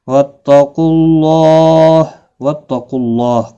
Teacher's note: اللہ کا لام پیش کی وجہ سے پر پڑھا جائے گا